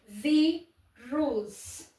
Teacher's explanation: A sílaba tônica é a penúltima e termina em us. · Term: paroxítona